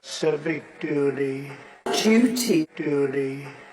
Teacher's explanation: donald trump just uses a d sound here